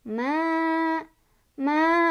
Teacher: Cara bacanya panjang 2 harokat. Ma, ma, diayun biar konsisten boleh. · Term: mad thobii